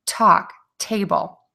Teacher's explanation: Then you're going to pull your tongue down away from the teeth. The difference on this sound is the air is really going to puff out of your mouth strongly, okay? So it's aspirated. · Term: aspirated T